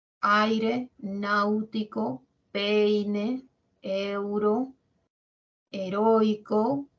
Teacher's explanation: Primero va la abierta y luego la cerrada cuál suena más la abierta · de la boca que está abierta se va cerrando por eso se dice decreciente y cuando es creciente cuando está cerradita la boca y luego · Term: El decreciente